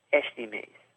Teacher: Carioca is going to pronounce the este part differently. It's more of a sh sound.